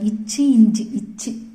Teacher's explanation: நடு நா நடு அண்ணம் தொடுவதால் தோன்றும் எழுத்துக்கள்.